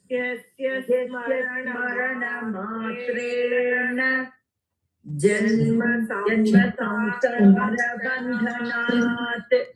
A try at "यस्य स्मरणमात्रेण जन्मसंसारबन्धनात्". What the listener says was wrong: Okay, we are going to now fix that extra matra, whoever is doing it.